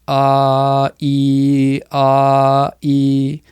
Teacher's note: Ah is this, kind of flat, and as you move to e, it creates this kind of downward incline